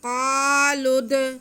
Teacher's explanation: लाम का पेश हम दाल के साथ मिलाएंगे। क़ालुद, दाल जो है वो हुरूफ़ क़लक़ला में से है, इसलिए हम इसे जुम्बश दे के पढ़ेंगे।